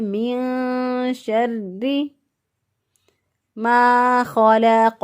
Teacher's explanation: اس کو خا کو ہم نے پر پڑھنا ہے، موٹا پڑھنا ہے